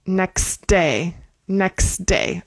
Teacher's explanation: And this is kind of like ne next next day. We're kind of going to skip the t in the last one. · We're going to go from the X right into that D sound.